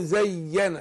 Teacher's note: سكون عرض بدون مد لان ما فيش حرف مد